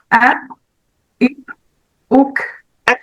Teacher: ये जो हवा निकल रही है वो क्यों निकल रही है, सिफत हम्स की वजह से अदा हो रही।